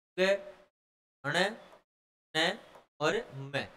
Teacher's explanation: नासिक्य का मतलब जिन व्यंजनों के उच्चारण में श्वास वायु नाक और मुख दोनों से बाहर निकलती है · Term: नासिक्य व्यंजन